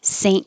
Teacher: pronounce the t unless there's a vowel after it saint so the tongue goes to the n and t position and just holds it there